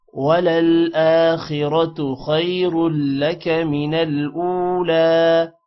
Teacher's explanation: من الاولی حمزہ واو پیش او تھوڑا سا لمبا کریں گے او کو، اور لام پر کھڑی زبر ہے اس کو بھی لمبا کریں گے۔